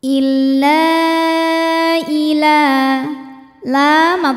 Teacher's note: maka lam dipanjangkan boleh empat boleh lima harakat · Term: Mad Jaiz munfasil